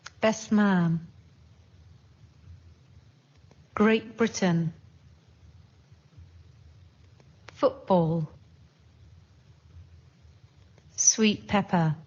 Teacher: In some English words, the sounds change when they're next to another sound. For example, t sounds more like p.